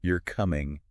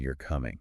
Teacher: difference between you're coming and you're coming oh wow right yeah that upward inflection at the end totally makes it a question totally so intonation it's subtle but it adds a layer of